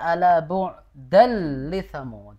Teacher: Ya, di penghujung ya ala bu'dal li thamud. Jadi lamnya double Ibu ya. Ada tanwin bertemu lam, ini berlaku hukum idgham bila gunnah.